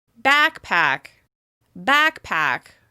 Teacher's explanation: As you can tell, the first syllable is stressed, which means it's longer, louder, and higher